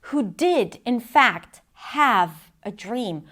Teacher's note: a lot of words are stressed here, did fact have dream